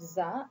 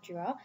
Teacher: differentiate between English alveolar fricative za and post-alveolar fricative ja because both these sounds are absent in Bangla.